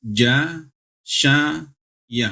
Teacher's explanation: makhrajnya tengah lidah bertemu dengan langit-langit atas. Ja, sya, ya, itu sama 3 itu.